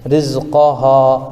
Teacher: رزقہا میں الف سے پہلے ہا کے اوپر زبر ہے، اس لیے الف مدہ ہوگا، ان کو تھوڑا کھینچ کر پڑھیں